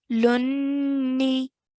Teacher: Hold the noon sound for the gunna sound.